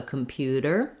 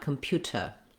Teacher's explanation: And then you might notice also that we don't say in American English computer with a t sound, no puff of air on our T. We use what's called a flap T here. It just sounds more like how we do the D sound in the middle of words. So computer, not computer.